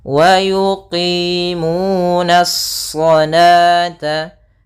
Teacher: Langsung kepada huruf shad yang tebal. Hati-hati, nanya tetap tipis, shadnya memang tebal.